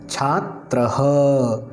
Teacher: विसर्ग का उच्चारण ह के समान होता है